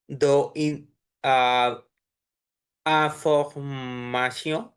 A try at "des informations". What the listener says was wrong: Right, এটা দে হবে, হ্যাঁ, দে, এখানে একটা লিয়াজ আছে, তাই না? কনসোনেন্ট ভাওয়েল, des informations বলেন, des informations, des যা, আমাকে ফলো করেন, ফলো মি, des informations, ও, আমার আবার নেটে,